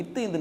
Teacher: நாவின் நுனி பள்ளி அடி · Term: பல்லின் அடி